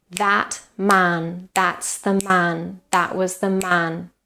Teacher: I produced this rhythm with the same time between stresses, between beats, but producing different types of syllables